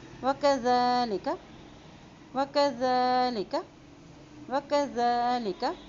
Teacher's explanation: زال کو نرمی سے ادا کرتے ہیں اور زال کے اوپر کھڑی زبر ہے اس لیے اس کو ایک حرکت لمبا بھی ادا کرتے ہوئے پڑھیں گے